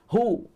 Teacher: Ulahum. Hum huruf ha. Jangan jadi ho. Tak ada ho, ada hu je. Hu. Pangkal halkum.